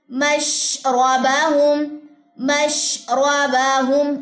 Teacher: र को पुर करना नहीं भूलना आपने क्योंकि शीन के फौरन बाद आ रहा है